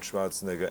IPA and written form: ˈʃvɑːrtsnɛɡər (Schwarzenegger)